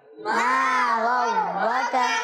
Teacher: غین کو کلیئر رکھیں گے اور را کو پر پڑھیں گے، را پر زبر ہے اور یہاں کاف کو باریک رکھنا ہے